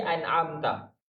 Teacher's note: Nun huruf tawassut. Dia sifat pertengahan. Dia ada rokhawah, ada syiddah. An'am. Dia ada mengalir suara, dia ada menahan suara.